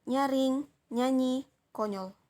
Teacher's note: Bunyi ini termasuk dalam bunyi laminopalatal, bunyi nasal, dan bersuara